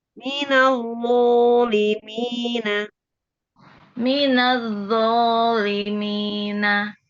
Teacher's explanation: Kalau zo tuh garing ya, maksudnya harusnya tebel. Nempel ke atas supaya penuh ya.